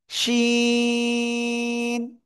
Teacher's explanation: জিহ্বার মধ্যখান, তার বরাবর উপরে তালুর সাথে লাগাবেন, লাগিয়ে উচ্চারণ করতে হবে শা শা শব্দ করে।